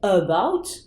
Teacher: un son entre le a et le e